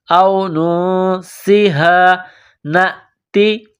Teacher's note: نون ساکن کے بعد سین ہے، سین میں سیٹی کی آواز پیدا کریں گے، نون ساکن پر غنہ کریں گے، آواز ناک میں چھپائیں گے